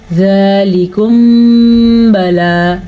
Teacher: اس کو اخفاء شفوی کہتے ہیں کیونکہ میم یا با دونوں کا تعلق ہونٹوں کے ساتھ ہے